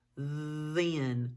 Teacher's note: do you feel that buzzing what does that mean it's voiced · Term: voiced diagraph th